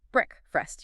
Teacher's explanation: You shouldn't hear that long A sound like in make or take. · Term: short E